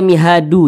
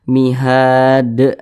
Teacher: Huruf dal tidak dibaca panjang, makanya kita sukunkan. Kemudian huruf dal ini dia sukun, karena sukun dipantulkan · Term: huruf qalqalah